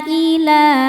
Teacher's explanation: la hukumnya mad thobi'i muqaddar karena ada lam dengan harakat fathah panjang. Cara bacanya dipanjangkan dua harakat.